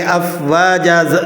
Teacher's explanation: افواجا، جیم دو زبر جن ہے، وقف کی حالت میں آپ اسے اس طرح ایک الف کے برابر کھینچ کر پڑھ لیں گے۔ افواجا، دو زبر کی تنوین ہے، وقف کی حالت میں یہاں پر الف ادا ہوتا ہے۔